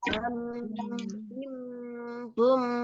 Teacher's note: Tanwinnya nggak dibaca ban, tapi masuk ke suara mim.